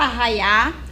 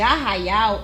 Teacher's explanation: a troca de sons na palavra com a omissão da letra l no final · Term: variação linguística